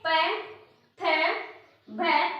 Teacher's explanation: प्राणवायु का प्रेशर हमारे होठों पर फील हो रहा है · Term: ओष्ठ्य